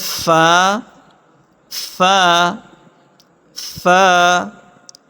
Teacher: اصل ثالث شفتان یعنی دونوں ہونٹ، اس میں دو مخارج ہیں جس سے چار حروف ادا ہوتے ہیں۔ فا، فا نچلے ہونٹ کا تری والا حصہ اور ثنایا علیہ کا کنارہ جب دونوں آپس میں ملے تو اس سے ادا ہوتا ہے